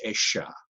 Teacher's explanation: if they're from the southern part of South America, they might say it with an SH